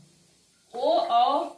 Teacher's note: जो ओ और औ है यह कंठ ओष्ठ है क्योंकि इनका उच्चारण स्थान कंठ और ओष्ठ से होता है।